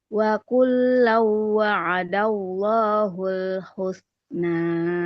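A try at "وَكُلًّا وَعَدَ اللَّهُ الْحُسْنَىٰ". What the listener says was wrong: Wa kullau dia jangan terlalu cepat Ibu. Wa kullau wa'adallahul husna.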